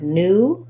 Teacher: in a word like new, it's just an ooh.